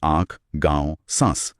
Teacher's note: चंद्रबिंदु जिसे अनुनासिक कहते हैं, उसके उच्चारण में हवा नाक और मुंह दोनों से एक साथ निकलती है